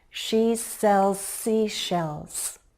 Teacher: I'm linking the final sound in cells Z. To the first sound in seashells. S. They're similar sounds, so it makes it easier to connect them. · They're similar sounds, so it makes it easier to connect them. I let the air flow from Z into the S. Let the air flow and there should be no break, no pause in between words.